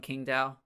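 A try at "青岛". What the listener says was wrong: You don't pronounce Q's. Qingdao.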